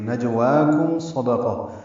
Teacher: جیم ساکن پہ قلقلہ ہے، واو کو 2 حرکات لمبا کرنا ہے.